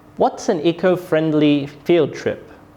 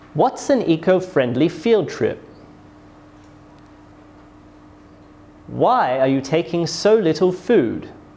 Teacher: for these questions my voice falls and it falls on the final content words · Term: falling intonation